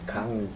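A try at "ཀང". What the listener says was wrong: Kang. It's not, there's no English G here.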